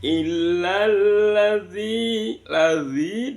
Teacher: Di lam itu ada bacaan idgham syamsiyah. Makanya ila yang seharusnya dibaca panjang karena ada idgham syamsiah maka langsung masuk ke dalam tasjidnya di lam